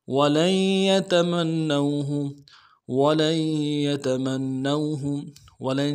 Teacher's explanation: ولن میں لام کو یا کے ساتھ ملانا ہے، یا کے اوپر تشدید زور دیں گے ، اور منو میں میم کو نون کے ساتھ ملانا ہے،